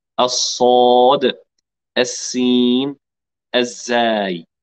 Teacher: كما ترون هنا تقريبا مخرج واحد الصوت ولكن في الصوت حرف مفخم وتقعر وارتفاع وسط اللسان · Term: صاد فخمه